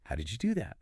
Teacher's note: focusing on making that downward movement at the end really clear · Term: falling intonation